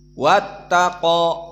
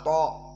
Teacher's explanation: to di sini to dalam keadaan mufakhomah, dan to mufakhomah diikuti dengan mad setelahnya